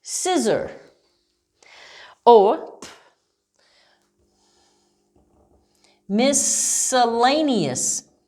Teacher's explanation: here you don't hear that c at all you hear the s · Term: silent c